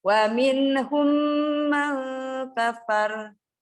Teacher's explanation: Minahum, nggak boleh. Nun sukun ketemu kaf, ikhfa kan? Udah belajar, dengung.